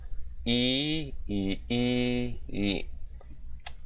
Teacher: the front close unrounded vowel, which is very easy as well, very common